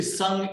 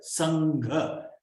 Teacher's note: Now the pronunciation of the N is a guttural N. Why? Because it is joined to a guttural.